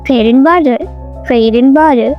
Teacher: And reduced to n or even nasalized sound.